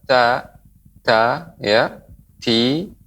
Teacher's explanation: punggung ujung lidah pada posisi pangkal dua gigi seri atas · huruf ta sifatnya adalah mengeluarkan hams, yang mengeluarkan aliran udara